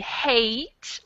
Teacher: hate has a diphthong it's definitely more closed than the hat sound